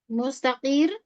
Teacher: supaya jangan samakan dengan kaf. Lebih mundur lagi lidahnya. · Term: huruf qofnya